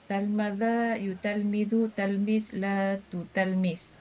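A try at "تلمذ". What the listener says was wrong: Betul.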